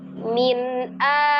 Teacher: Tidak ditahan, tidak digunahkan, dibaca dengan jelas hanya bunyi nun sukunnya dialirkan sebagian. Min a. Jadi bukan min a atau bukan juga min a ya. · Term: izhar halqi